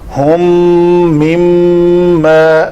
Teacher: دونوں میموں کے اوپر تشدید جو ہے وہ ظاہر کرنی ہے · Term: ادغام شفوی